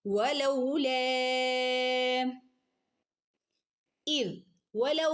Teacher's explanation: വവിന്റെ ഉച്ചാരണം ചുണ്ട് സർക്കിൾ ആക്കി പിടിക്കുക ചുണ്ട് വട്ടത്തിൽ പിടിക്കുട്ടോ